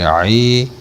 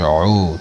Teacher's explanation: آئین کا جو مخرج ہے جہاں سے یہ ادا ہوتا ہے، یہ حلق کا درمیانی حصہ ہے، وسط حلق